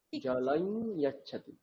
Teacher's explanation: এবার এখানে যে জলম তারপরে ইয়াচ্ছাদি, এই যে অনুস্বারের পরে ইয়কার ব্যবহার করা হয়েছে, আমি যদি এটাকে ছন্দের মধ্যে ফেলি তাহলে এর উচ্চারণটা কেমন হবে, অনুনাসিক ইয়কার হয়ে যাবে, মানে শুধু ইয় নয়, ইয়, নাক দিয়েও ইয়কারটাকে বলতে হবে। কেমন করে হবে তাহলে, জলাই ইয়, হ্যাঁ, জলাই এরকম নয়, জলাই, নাক দিয়ে ইয়কারটা বেরোবে, জলাই ইয়াচ্ছাতি।